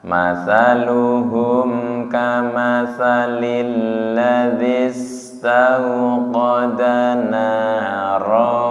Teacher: jelas yang panjang di na dan ro nggih. Selain itu pendek nggih.